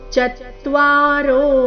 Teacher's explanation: ಚತ್ವಾರೋ ಚ ಮೇಲೆ ಆಘಾತ ರೋ ದೀರ್ಘ